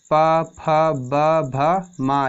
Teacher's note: ये हमारे ओष्ठ से बोले जाते हैं।